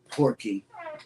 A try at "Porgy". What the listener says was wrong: It's got a G in it.